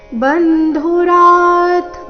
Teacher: ಬ ಮೇಲೆ ಆಘಾತ ರ ನಂತರ ಅರ್ಧ ತಕಾರ ಇದೆ